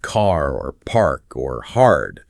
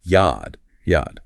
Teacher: In a classic non-rotic Boston accent, that R sound after a vowel is often dropped or sometimes replaced with a slight vowel sound